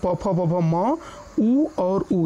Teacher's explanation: इनको जब हम बोलते हैं तो हमारी ओठ ऊपर नीचे होते हैं, ओठ की सहायता से बोलते हैं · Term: ओष्ठ वर्ण